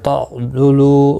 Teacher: ولا، لا الف مدہ ہے، 1 الف کی مقدار کے برابر کھینچ کر پڑھیں گے۔ تعضلو، ضاد حروف مستعلیہ ہے، پر پڑھا جائے گا